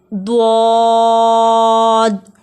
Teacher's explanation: حرف حافیہ ایک ہی ہے جو زبان کے بغلی کنارے سے ادا ہوتا ہے